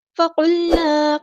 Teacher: قاف کو ہم نے پورا ادا کرنا ہے، ہیوی لیٹر ہے اور لام ساکن کو ہلانا نہیں ہے